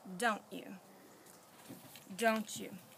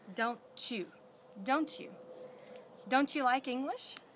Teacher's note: with a t it turns into CH the CH sound